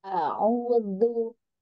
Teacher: Tempatkan lagi zu-nya, ujung lidah ke belakang gigi seri atas